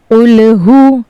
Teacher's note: हमें काफ को पुर करके पढ़ना है। जैसे कुलहु और यहां पर हा जो है वो हलक के सीने की तरफ वाले हिस्से से अदा होगा।